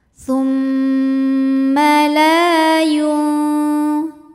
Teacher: Sebab ada alif sebelumnya berharokat fathah. Cara bacanya lam dipanjangkan 2 harokat. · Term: mad tabi'i zahiri